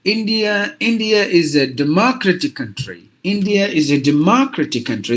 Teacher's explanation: look at this word this word has got four syllables so some of us may tend to give the stress for the second syllable